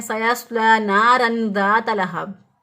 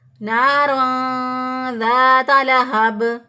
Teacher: तनवीन की आवाज़ को जाहिर नहीं करना था, बल्कि क्या करना था, पोशीदा करना था।